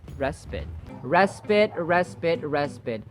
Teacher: The final vowel sound is as in schwa, the relaxed vowel sound.